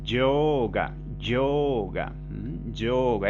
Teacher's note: Y la O en sánscrito, así como la E, siempre son largas, son sonidos largos